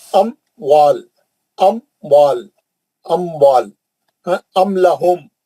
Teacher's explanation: میم کو نہیں کھینچیں گے, ام لہم بغیر غننے کے میم کو ظاہر کریں گے · اظہار شفوی کا طریقہ، میم ساکن کے بعد با اور میم کو چھوڑ کر کوئی بھی حرف آئے تو اظہار شفوی ہوتا ہے، جیسے اموال، اموال میم ساکن ہے یہاں پہ، اموال، تو یہ میم کو جلدی پڑھیں گے ہم